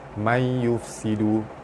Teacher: nun mati bertemu ya, hukumnya idgham ma'al gunnah dibaca masuk dengan dengung 2 harakat